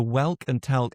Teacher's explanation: because of the L, specifically dark L, you go /wælk/ and /tælk/